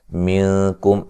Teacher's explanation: نون ساکن کا باریک اخفا ہے ، یہاں میم ساکن کا اظہار ہے ملانے کی صورت میں،